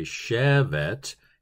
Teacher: the t is aspirated because Hebrew is a very guttural and inyour face and explosive consonant kind of language